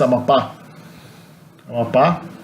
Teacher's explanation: If there's an accent mark on the last vowel, it's because it's stressed on the last syllable. So it's not Amapa, it's Amapá.